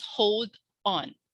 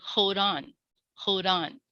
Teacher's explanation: the boundaries of the words are more blended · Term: liaisons